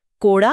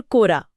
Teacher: ड एक उत्क्षिप्त व्यंजन है।